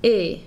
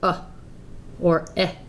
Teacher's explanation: make sure you say /e/ instead of /ə/ or /ɛ/